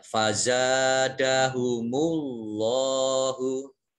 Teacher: Kemudian fazada, za fathah, alif, mat tobi'i, dibaca panjang 2 harokat. Kemudian Allahnya dibaca tebal karena harokat di depannya dhammah. Jadi kalau Allah ada harokat di depannya itu fathah dan dhammah, itu Allahnya dibaca tebal.